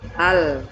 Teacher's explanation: ketika mengucapkan huruf lam, maka ujung lidah nempel ke atas dan suara keluar dari bagian tepi lidah. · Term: inhiraf